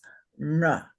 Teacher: The second varga is palatal, and that is na.